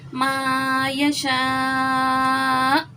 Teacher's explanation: جھٹکا آ گیا، ساکن ہو گیا وقف کی صورت میں حمزہ، تو یہاں پہ ہم نے جھٹکا دیا۔